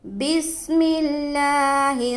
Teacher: لفظ اللہ کا لام کو باریک پڑھیں گے کیونکہ لفظ اللہ کے لام سے پہلے زیر ہے۔